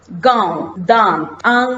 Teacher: अनुनासिक स्वर उच्चारण मुंह और नाक से होता है अनुनासिक स्वर है इनका उच्चारण मुंह और नाक से करते हैं